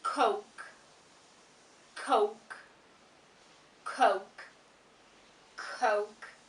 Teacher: it's an O sound, O. So you've got a diphthong again. What many people do is pronounce this word as cock.